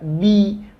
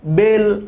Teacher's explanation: Ingat, baris bawah itu dengan ikut menurunkan bibir bagian bawah, maka otomatis ba nanti bunyinya akan menjadi huruf i, maka bi, bukan bel.